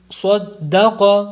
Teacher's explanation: مسخرات صدق، اس میں دو حروف مستعلیہ ہیں اس لیے دونوں کو پر کریں گے